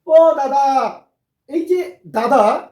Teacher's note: দ এর পরে যে আ সেটা কিন্তু অনেকটা বিলম্ব হচ্ছে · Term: প্লুতস্বর